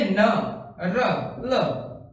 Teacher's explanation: इनको अगर बोलकर देखेंगे तो हमारी जीवा जो है वो मसूड़ों के ऊपर टच करेगी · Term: वत्सर